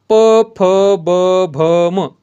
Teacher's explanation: करताना दोन्ही ओठांचा दोन्ही ओठाचा वापर होतो किंवा स्पर्श होतो किंवा ओठ एकमेकांना स्पर्श होतात त्यांना काय म्हणतात ओष्टी वर्ण असे म्हणतात